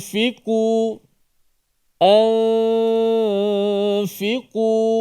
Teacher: Tetapi di sini nun mati dimatikan dengan cara menyembunyikan makhraj nun. Hujung lidah tak pergi sentuh pun langit tempat makhraj nun. Nun tu hanya dikekalkan pada gunnah sahaja. · Nun tu hanya dikekalkan pada gunnah sahaja. Dikekalkan pada gunnah, dengung yang berlaku di mana? Di khayshum ataupun di rongga hidung kita. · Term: ikhfa